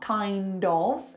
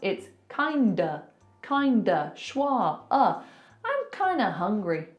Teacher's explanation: we're turning that of into a schwa. So it's not kind of, it's kinda, schwa, I'm kinda hungry.